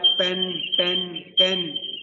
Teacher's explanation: There is no vibration in the words like pen, ten, can. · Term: voiceless sound